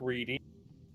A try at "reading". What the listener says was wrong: Why do I hear like you saying reading with a T instead of a D? Almost like you're saying re-eating.